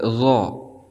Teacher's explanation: ujung lidah sedikit keluar seperti huruf za. Namun huruf zo ini lebih tebal daripada huruf za. · Makhraj huruf daripada huruf zo ini terletak pada ujung lidah dengan ujung gigi seri bagian atas.